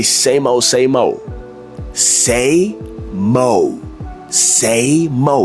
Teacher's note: So they don't say same old, same old. Like you don't hear the D.